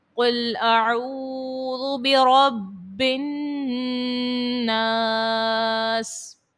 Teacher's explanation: یہاں پر دیکھیں را کو آپ پر پڑھیں گی، موٹا پڑھیں گی، اور با کے اوپر تشدید ہے، با مشدد ہے، اور با جو ہے حرف کلکلہ میں سے ہے، تو با کو آپ نے جماؤں کے ساتھ ادا کرنا ہے